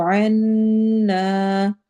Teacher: ذنوبنا، ذال کو نرمی سے پڑھنا ہے، واو پہ واو مدہ ہوگی، بنا میں الف مدہ ہو رہی ہے، وکفر، واو میں ہون گول ہوں گے، کفر میں روا باریک ہوگا، عنا، عین حروف حلقی میں سے ہے، نون پر غنہ کرنا ہے اور ساتھ ہی الف مدہ بھی کرنی ہے